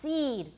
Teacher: For seed, we can put that mark in there to show that it's longer because the next sound is voiced. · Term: length mark